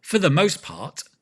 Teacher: Often that T at the end we don't pronounce.